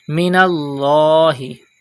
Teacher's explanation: Pronounce the lam of Allah's name with thicker voice because there is zabar before it.